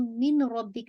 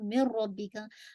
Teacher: इदगाम complete है, यानी कामिल इदगाम है विदाउट गन्ना